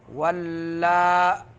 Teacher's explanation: ولا کڑی زبر کو ایک الف کے مقدار لمبا کرنا ہے